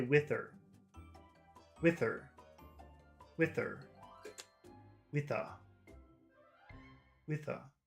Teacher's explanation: In some types of English, people don't pronounce H's, ever. So that word her becomes part of the word in front of it.